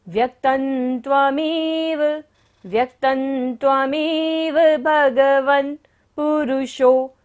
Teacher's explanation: विधिर्विधानात्, शिव मार्गे विधिर्विधानात्। व्यक्तन, त के ऊपर बिंदी है और बाद में क्या आ रहा है, त वर्ग, त थ द ध न। जब बिंदी के बाद होता है तो बिंदी का उच्चारण क्या होगा, न।